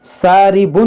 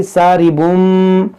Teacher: یہاں وساربم اس تنوین کے اندر جو نون ساکن ہے اس کو میم سے بدل کر پڑھنا ہے. ساربن نہیں پڑھنا بلکہ ساربم.